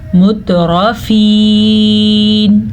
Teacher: البتہ را کو ہم موٹا پڑھیں گے کیونکہ را کے اوپر زبر ہے. یہاں پہ یا مدہ ہے یا ساکن سے پہلے زیر ہے تو ہم نے اس کو کھینچا مترفین. وقف کی وجہ سے نون پہ ساکن آ گیا.